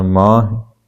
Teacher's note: ਮਾਹਿ ਮਮੇ ਕੰਨਾ ਹਾਹੇ ਸਿਹਾਰੀ ਕਿਰਿਆ ਹੈ, ਆਪ ਸੌਰੀ ਇਹ ਸੰਬੰਧਕ ਹੈ, ਤੇ ਇਹਦਾ ਉਚਾਰਨ ਆਪਾਂ ਨਾਸਕੀ ਕਰਾਂਗੇ। ਮਾਹਿ ਹਾਹੇ ਨੂੰ ਸਿਹਾਰੀ ਹੈ, ਉਹਦੇ ਉੱਪਰ ਆਪਾਂ ਬਿੰਦੀ ਦਾ ਪ੍ਰਯੋਗ ਕਰਕੇ ਉਹਨੂੰ ਆਪਾਂ ਨਾਸਕੀ ਰੂਪ ਦੇ ਵਿੱਚ ਬੋਲਣ ਦਾ ਯਤਨ ਕਰਾਂਗੇ